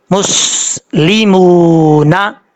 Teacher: واو ساکن سے پہلے پیش ہے، 1 الف کی مقدار اس کو لمبا کر کے پڑھیں گے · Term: واو مدہ